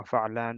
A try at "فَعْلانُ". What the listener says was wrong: No dhammatain, no tanween here. Some nahu issues. No tanween.